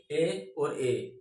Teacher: ये दो स्वर हैं जो कंठ तालव्य हैं। दोनों दोस्तों ये दो अलग अलग स्वर से मिलकर बने हैं, इसलिए दोस्तों इन्हें हम संयुक्त स्वर भी कहते हैं।